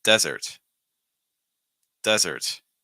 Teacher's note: sweets so again desert dessert this has to do with stress for desert with the sand then you want to stress that first syllable with dessert the sweet and the sugar you want to stress